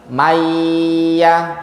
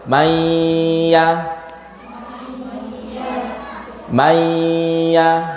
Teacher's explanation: kurang tepat karena tidak ada hunah tidak ada dengungan dari hidung yang benar harus ada dengungan dari hidung May baca jadi suara hidung alir May mayyaya Oke kita baca